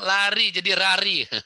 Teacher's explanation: Di bahasa Jepang nggak ada huruf L ya. Dia nggak bisa ngomong lari jadi rari.